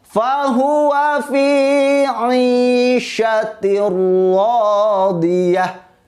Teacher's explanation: Ro-nya berharokat fathah, maka dibaca tebal.